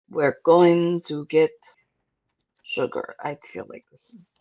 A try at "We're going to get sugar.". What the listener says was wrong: Hard stop after sugar. Try again.